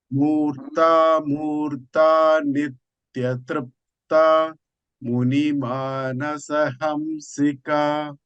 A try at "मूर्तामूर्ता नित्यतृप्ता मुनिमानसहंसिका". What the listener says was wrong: So make this dirghas little more, prolong it little more. Hamsika Trupta.